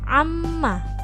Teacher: huruf mim berharakat tasydid maka dibaca dengung